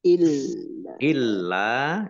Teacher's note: lamnya dibaca dobel ada tasdidnya